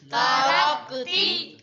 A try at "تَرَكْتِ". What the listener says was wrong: رک نہیں کرنا، ترکتی